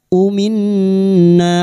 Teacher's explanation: Sufaha minna. Umin nun yang bertasdid guna musyaddadah kita dengungkan selama 3 harokat.